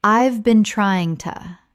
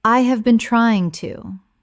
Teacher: When spoken naturally, the H in have often disappears and the words run together. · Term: connected speech